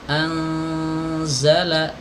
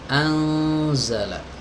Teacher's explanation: karena huruf zai itu adalah huruf yang tipis, maka nun di sini dibaca samar dan tipis. Anzala, tidak boleh dibaca anzala. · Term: ikhfa